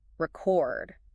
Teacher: But if I shift the stress record. Stress on the second syllable.